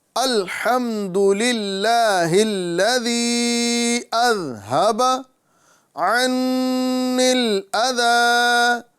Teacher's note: ذال کی صحیح ادائیگی کرنا ہے، یعنی زا نہیں بلکہ ذا یہ ادا کرنا ہے